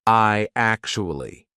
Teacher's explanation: What we're going to put in the middle is we're going to put a Y sound. So it becomes I actually why do we say why? · So, when you've got I actually, how are we going to link that? What we're going to put in the middle is we're going to put a Y sound.